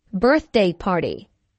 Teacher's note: Notice that the normal stress for a compound noun falls on the first element of the compound.